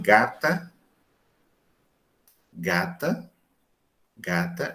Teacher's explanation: Mas se eu digo assim, gata, gata, gata, eu não arredondo. Mas quando eu digo gota, esse G de gota é o mesmo G com um Wzinho em cima, né?